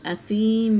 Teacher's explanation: اثیم، یا ساکن سے پہلے زیر ہے، یا مدہ، اور میم پر تنوین ہے مگر آیت آئی ہے تو میم کو ساکن کر دیں گے، اثیم پڑھیں گے۔